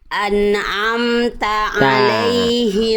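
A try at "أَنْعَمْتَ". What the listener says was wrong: Bagus ainnya, tapi non sukunya jangan mentu, jangan ane, tapi an'amta. Non sukunya bagus, tapi ainnya jadi ragu-ragu. Gitu loh. Jadi ketika ainnya dimaksimalkan, non sukunya mantul. Ketika non sukunya aman gak mantul, ainnya kurang kuat. Dua-duanya harus maksimal.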